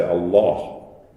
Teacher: the way this is pronounced in Arabic, the L is darkened